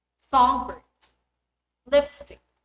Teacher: in English compound nouns the primary stress is on the first component